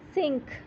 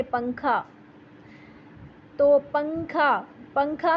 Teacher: जब आप पिंक बोलते हैं तो आप एन साउंड करने के लिए अपनी जुबान को अपनी जुबान की नॉक को तालु पे टच नहीं करते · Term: एकफा